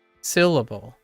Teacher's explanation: if you're emphasizing sill you're going to drop in speed you're going to increase slightly in volume and your pitch goes up